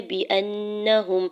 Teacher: حمزہ کے زبر کو نون مشدد کے ساتھ ملاتے ہوئے نون کے زبر کو بغیر کھینچے ہوئے ادا کرنا ہے، اور یہاں پہ نون مشدد پہ غنہ بھی کریں گے